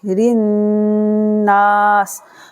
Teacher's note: را کو ملائیں گے نون کے ساتھ، را کو پڑھیں گے باریک، رناس، اور نون پر غنہ ہوگا، سین ساکن بن جائے گا وقف کی صورت میں۔